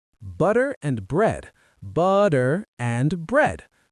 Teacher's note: Soft T in butter, clear R in bread.